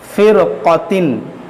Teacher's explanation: रा को भी हम मोटा पढ़ेंगे क्योंकि रा साकिन के बाद हुरूफ़ मुश्तालिया है।